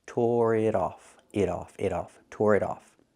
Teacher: The T in it is a fast T because it's between vowels.